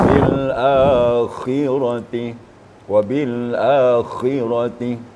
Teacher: Kha itu harus ada getaran pada tenggorokan kita. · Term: huruf kha